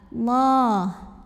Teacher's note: karena huruf sebelumnya yang lam barisnya fathah, maka dibacanya tebal. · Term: tafkhim